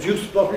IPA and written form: ˋʤuːsbɒtl̩ (juicebottle)